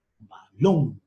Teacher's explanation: Fuerza de voz en la sílaba lón. La sílaba lón es la última sílaba de la palabra balón.